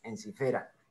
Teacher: La penúltima sílaba fe termina en vocal abierta, entonces la sílaba es larga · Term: acento en fe